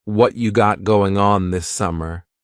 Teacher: Or we could say, what you got going on this summer. Whatcha is what plus you becomes cha.